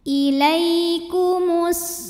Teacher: sebab ada Ya Sukun didahului baris fathah maka dibacanya lembut